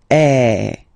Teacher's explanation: So if you look, it goes like that, okay, and then it's called accent grave, okay, and the sound that you will have to produce is A, so it's really open, I mean the sound is really open, and normally your mouth should be opened a little bit more than with the accent aigu as well. Okay, so it goes like eh.